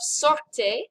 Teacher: hear how i said the word the french r is in your throat it's not one of those trilled ours like they have in spanish or italian